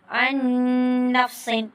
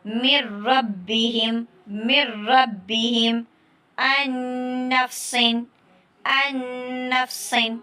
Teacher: ایک نون آ رہا ہے تو دوسرا نہیں پڑھا جائے گا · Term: ادغام کامل